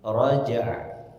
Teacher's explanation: Was-samaa'i dzatir raj'. Nah, jadi ketika mengucapkan huruf jim dipantulkan, kemudian masuk makhraj ain